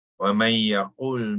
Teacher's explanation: Nun itu dimasuk ke dalam ya. Jadi nun ini tidak lagi dibacakan, ya, disebutkan kerana dia sudah diidghamkan ke dalam huruf ya, ya, menjadi idgham ma'al gunnah. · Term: idgham ma'al ghunnah